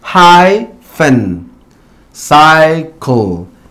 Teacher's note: la Y está situada en la sílaba tónica. Por ende, en este caso, tiene un long I sound